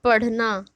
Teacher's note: जीभ जब मूर्धा को स्पर्श करके वापस आए तो वो हमारा कौन सा व्यंजन होता है, उक्षिप्त व्यंजन होता है